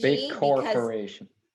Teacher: we still want to get that G in there, but we're not going to release the G.